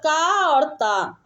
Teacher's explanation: का और ता को अल्प प्राण अघोष ध्वनि माना जाता है। इसकी व्याख्या देते हैं कि वायु को संस्कृत में प्राण कहते हैं।